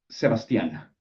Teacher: Stress on the last syllable